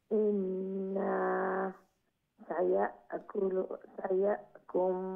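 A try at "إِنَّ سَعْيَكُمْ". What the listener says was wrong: ইন্না সা'য়াকুম, ইন্না না লম্বা করবেন না। আর এরপরের শব্দটা হচ্ছে সা'য়াকুম। আর আগেও বলছিলাম যে যদি কোনো শব্দকে উচ্চারণের ক্ষেত্রে একটু ডিফিকাল্ট দেখা যায় তো তাহলে ওইকে দুই ভাগে বিভক্ত করে নেবেন। এখানে সা শুধু বলবেন এক পার্ট, একটা অংশ সা, আর দ্বিতীয় অংশ বানিয়ে নেন ইয়াকুম।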